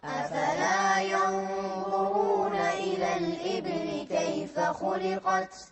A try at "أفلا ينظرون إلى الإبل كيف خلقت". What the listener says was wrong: مو الإبل، الإيبي، الباء مكسورة.